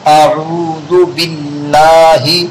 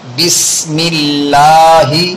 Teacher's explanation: اللہ کے لام کے باریک ہونے کا قاعدہ، اس لیے کہ اللہ کے لام سے پہلے زیر والا حرف آیا ہوا ہے